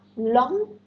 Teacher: English lateral approximant, konsonan cuma satu, bunyi l, seperti pada kata long